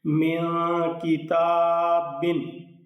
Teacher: اس تا کو لمبا بھی کر کے پڑھنا ہے ایک الف کی مقدار، اور اس کاف کا خیال رکھنا ہے کہ یہ باریک پڑھا جائے گا